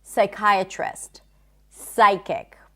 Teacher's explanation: You just don't pronounce the P sound.